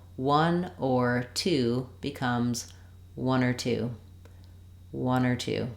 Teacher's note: for the word or we reduce it to just an R sound and it can link to the previous word and the following word